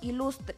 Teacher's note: La U abierta cuando se encuentra en sílaba trabada.